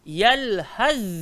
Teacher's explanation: Tempat keluar sama, sifat beza. Huruf tha dengan huruf zal dua-dua kena gigit lidah.